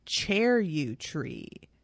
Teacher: with a little upturned vowel at the end